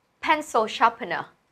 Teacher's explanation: Pencil trọng âm đầu tiên này. Sharpener cũng đầu tiên luôn.